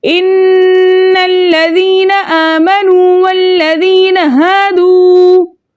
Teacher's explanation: वाव मद्दा को दो हरकत की मिकदार खींच कर पढ़ते हैं।